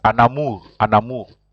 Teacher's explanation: You don't say un amour, you say an amour. You join the N and the A, so you pronounce it an amour